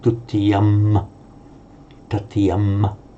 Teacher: it would be just an or im ending, pronounced as a normal M, as in English